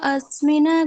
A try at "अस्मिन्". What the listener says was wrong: अस्मिन ऐसे नहीं बोल, रुकेंगे नहीं। अस्मिन नकार है केवल, ठीक है। वो सकार, हाँ सकार का थोड़ा सा आप वो विशेष ध्यान रख लीजिएगा।